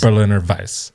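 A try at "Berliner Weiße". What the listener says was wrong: So the W is more of a V sound.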